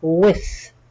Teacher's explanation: the TH at the end gives a T sound, but with your tongue between your teeth. It's one of the soft sounds of TH.